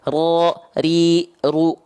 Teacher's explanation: Bergetar. Tapi sedikit. Nggak sama seperti getaran di huruf R. Ya, itu sekitar 1 sampai 2 getaran saja. · Karena huruf ro punya sifat namanya takrir. Takrir itu artinya bergetar. Ya, gitu. Bergetar.